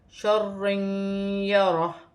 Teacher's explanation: ذرات شرن یرہ، یہاں پر را مشدد ہے اور دو زبر کی تنوین بھی ہے، دو زبر کی تنوین کے بعد یا مشدد آ رہی ہے، تو یہاں پر دو زبر کی تنوین میں غنہ کیا جائے گا، ادغام مال غنہ ہوگا، غنے کے ساتھ ادغام کیا جائے گا، جیسے شرن یرہ۔